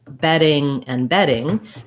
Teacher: two t's or two d's in the middle are both gonna be that flap sound